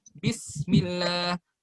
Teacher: pas kita baca bismillah itu kita tahan dulu di sinnya, satu harokat, satu ketukan